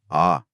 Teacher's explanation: विवृत, जिसमें मुंह पूरा खुला रहता है। ऐसा केवल एक ही स्वर है आ